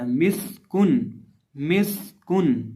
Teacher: इस लफ्ज़ के अंदर भी हमारे पास कुल 3 हरफ है, मीम, सीन और काफ। सीन के अंदर सिटी की आवाज़ पैदा करके पढ़ेंगे और मीम और काफ को सिंपल बरीक पढ़ा जाएगा